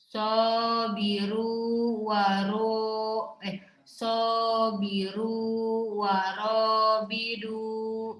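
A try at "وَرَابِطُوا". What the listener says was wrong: bitu. To bukan bidu. Itu mah to ya. Sabiru wa rabitu.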